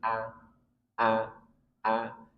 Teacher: huruf hamzah yang keluar dari pangkal tenggorokan maka jangan sampai dari dada kalau dada berat a ini dada tapi a A.